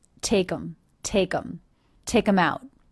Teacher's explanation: reduced the word them to the schwa and the M sound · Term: reduce the word them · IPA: [teɪk‿əm‿oʊt|]